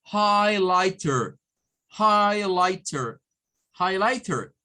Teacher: lleva la sílaba tónica en High pero esta tiene tres tres sílabas · la terminación er recordemos que es una terminación especial es una terminación especial que para los americanos suena como Air como una e con una r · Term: American english